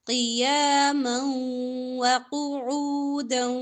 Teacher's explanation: دو زبر کو واو کے ساتھ ملا کر ادغام کریں گے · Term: ادغام بالغنہ